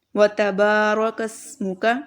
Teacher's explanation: با جو ہے یہاں پر اس کو لمبا کریں گے کیونکہ الف مدہ ہے